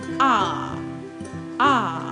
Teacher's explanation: it's a long a sound and the sound is same as in father or park